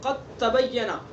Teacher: قد تبین، قد تبین نہیں پڑھیں گے اس کو، دال کا تا میں ادغام کر دیں گے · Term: ادغام متجانسین